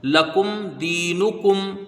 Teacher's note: کاف کو میم سے ملائیں گے، میم ساکن کے بعد دال ہے تو یہاں اظہار شفوی ہوگا، میم کو ظاہر کر کے بغیر غنہ کے پڑھیں گے، اور دال کو یا سے ملائیں گے، یہاں یا مدہ ہے، اس کو ایک الف کی مقدار کھینچ کے پڑھیں گے۔ نون کے اوپر پیش ہے، اس کو جلدی پڑھیں گے۔